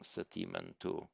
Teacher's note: the final vowel of Sati has been made long